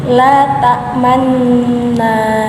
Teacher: Hukum ismam itu adalah memonyongkan dua bibir di tengah-tengah dengung